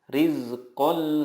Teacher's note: bilagunnah adalah nun sukun atau tanwin bertemu dengan lam atau rol cara membacanya meleburkan nun sukun ke huruf berikutnya tanpa guna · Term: idgham bilagunnah